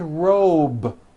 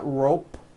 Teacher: robe also has a voiced B ending it's not rope with an unvoiced P